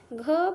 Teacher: घ भी महाप्राण है, क्योंकि उसको बोलते समय हम लोग मुख से हवा ज़्यादा तेज से निकाल रहे हैं